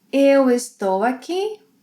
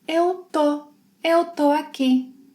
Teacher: In Brazilian Portuguese, in spoken Brazilian Portuguese, we often drop the es